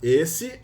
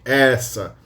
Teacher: You still have closed e for masculine and open e for feminine.